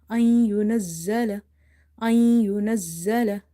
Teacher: So after the noon sakin, you see the letter ya. So it will be idgham, meaning merging, but without gunna.